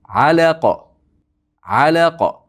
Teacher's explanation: A ingichka la ingichka qof yug'on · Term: qof yo'g'on